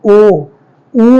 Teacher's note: ओ ऊ जब बोलेंगे तो हमारे ओठों का आकार जो होता है, हमारे ओठों के बीच में, ओष्ठों के बीच में क्या बन जाता है, गोला बन जाता है। इसीलिए हम इसको क्या कहते हैं, व्रतमुखी।